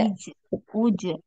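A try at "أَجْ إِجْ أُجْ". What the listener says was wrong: ini nggak jelas ya, kol-kolahnya itu nggak jelas, harus jelas.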